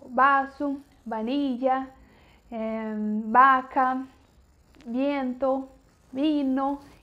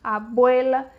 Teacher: você encosta levemente o lábio superior no inferior, que dá esse som de B fraco